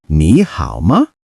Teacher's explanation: ma is the question particle in a light neutral tone